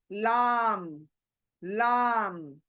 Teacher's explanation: ये बारीक लेटर है, लाम, लाम, यानी हमारी जबान सामने के दांतों को जड़ को लगती है, ये तब जाकर लाम अदा होता है। लाम, इसमें कोई डिफिकल्टी नहीं है, आराम से निकल जाता है।